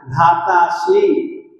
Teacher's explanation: आ के बाद में अ है, अ आ मिल करके आ बन गया, और ये अ का लोप बताने के लिए अवग्रह चिन्ह का प्रयोग किया गया, धातासी।